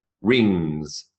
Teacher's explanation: the final sound in rings isn't a g, it's a ng